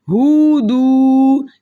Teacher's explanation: اس لفظ کو دھیان سے پڑھنا ہے کیونکہ اکثریت لوگ غلطی کر جاتے ہیں اس لفظ میں پڑھتے وقت، یا تو وہ پڑھ دیں گے ہودو، یعنی کہ واو مدہ کے ساتھ ساتھ پیش کو بھی کھینچ دیتے ہیں